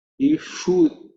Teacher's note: Ishu, again, sha, which is cerebral sha.